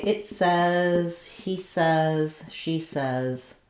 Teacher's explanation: When we say it says, he says, she says, we no longer use that AY pronunciation that we do in I say, you say, etc.